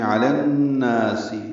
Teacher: نون مشدد پہ ادغام شمسی مع الغنہ